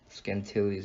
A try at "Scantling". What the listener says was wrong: It's just Scantling. You're adding like extra syllables.